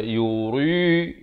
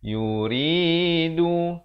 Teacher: Yuridu, ri dibaca nipis, jangan baca yuri, itu tebal. Yang betulnya yuridu.